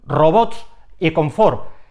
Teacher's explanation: el golpe de voz en estas palabras está en la última sílaba terminan en grupos de dos consonantes en el caso de robots